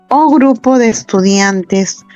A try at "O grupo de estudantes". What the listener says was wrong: No, cuidado, no dice estudiantes.